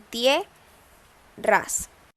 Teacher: Como siguiente ejemplo tenemos la palabra tierras, se divide en tie, ras. Hay una vocal cerrada y una vocal abierta y se mantienen en la misma sílaba. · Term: diptongo